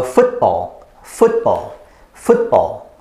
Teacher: you block your airway using your throat and then make an opening again make the air come out again